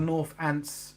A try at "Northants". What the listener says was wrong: No, North. It's an H.